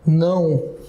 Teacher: Ou seja, assim, o meu O, que é uma vogal, passa a ser uma semivogal · Eu não falo o, eu falo assim, ó, não. Olha só, o meu O tem som de U.